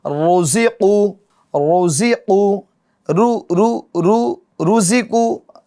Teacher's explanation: را پر پیش ہے، تو یہ را بھی کیا ہوگی؟ پور یعنی موٹی پڑھی جائے گی